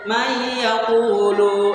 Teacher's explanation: nun mati ini walaupun ada, tapi kita anggap tidak ada, sehingga kita membacanya dari mimnya itu langsung ke iya